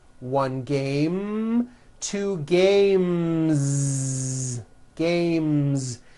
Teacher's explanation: when you add an S, the S should also be voiced.